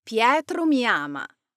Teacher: The atonic pronouns blend into the sentence with less emphasis. For example, Pietro mi ama. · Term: unstressed or atonic